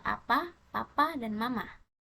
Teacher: Vokal A, vokal depan rendah dan tak bundar. Contohnya pada kata apa, papa, dan mama.